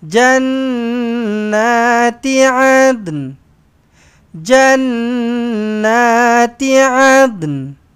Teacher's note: Lantunkan sikit huruf dal dan bunyikan sedikit huruf nun dekat belakang.